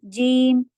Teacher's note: جیم، اس جیم جیسا نہیں ہوگا. جیم جیم بالکل کلیئر ہوتا ہے ہوا کے بغیر